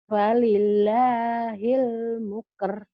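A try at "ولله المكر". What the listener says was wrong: Bukan muker ya Bu ya. Coba tanda ini mu apa ma ya Bu ya? Falillahil makar. Makar.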